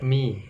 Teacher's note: Mim merapatkan dua bibir tapi tidak berlebih-lebihan sampai mi, tapi hanya nempel saja, mi, tidak perlu ditekan.